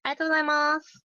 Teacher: a lot of people pronounce it rather quickly, with more emphasis on the final syllable su